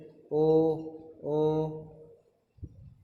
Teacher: इनका उच्चारण कंठ और होठों के द्वारा होता है।